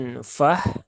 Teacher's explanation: atau H mati maka pastikan yang keluar adalah huruf ha ya huruf ha yang ada di pangkal tenggorokan yang paling bawah ya bukan yang di sini ya bukan yang di tengah tenggorokan